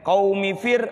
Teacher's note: Qaumi fir, mi-nya pendek. Qaumi fir, ra sukun sebelumnya kasrah. Apa hukumnya Ibu? Tarqiq, tipis.